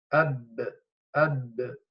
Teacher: this is how the sound is cut off because the makhraj is completely closed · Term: ba mushaddada maftuha